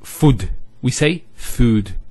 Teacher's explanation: there's the elongation of the O sound